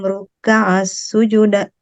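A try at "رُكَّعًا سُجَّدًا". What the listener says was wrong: Ruka'an ditahan ainnya. Ruka'an sujada. Iya-nya ditahan.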